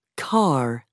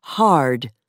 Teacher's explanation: Most Americans also pronounce the R at the end of words, for example, car, and before a consonant, for example, hard